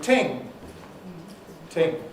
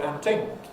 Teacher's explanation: West Indian working class speech uses a plosive instead, giving you ting, ting, and where we might say and so on, Jamaicans often say and ting, and so on, and things.